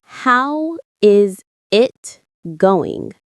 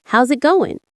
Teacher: The word is disappears. And the final G in going often softens. This is called connected speech.